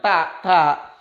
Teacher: Ini lahir di ujung lidah kita. Jadi ujung lidah berada di belakang gigi depan.